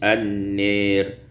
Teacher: Pada ayat yang ke-48, an-nari, imalatu fathatin nun wal alif, dibaca imalah fathah nun dan alif menjadi an-nir